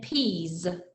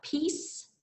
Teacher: peas had that buzzy feeling where peace had the S.